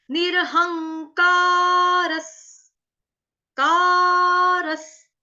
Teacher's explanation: स आपका हलंत आएगा, आधा स, जो विसर्ग है उसका उच्चारण हलंत स से कर रहे हैं